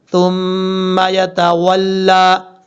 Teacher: تھا کو بغیر سیٹی کے ساتھ پڑھنا ہے